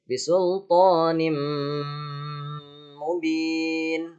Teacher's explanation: Pas di lafaz bisultanim ya, nimnya itu ditahan ya. Pas di idghamnya itu ditahan selama 3 ketukan.